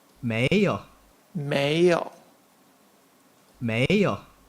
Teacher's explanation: notice the tones second tone and third tone